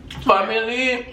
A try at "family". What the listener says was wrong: Yeah, y'all pronounce it with a B.